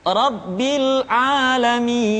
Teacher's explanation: Jadi mi dibaca panjang karena kita menemukan huruf sukun.